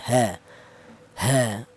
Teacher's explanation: Untuk huruf ha, yaitu keluarnya huruf berasal dari pangkal tenggorokan.